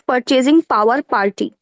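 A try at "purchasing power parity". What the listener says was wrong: Purchasing power, not party. Purchasing power parity.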